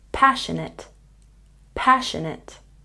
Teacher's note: Passionate has a stress on the first syllable.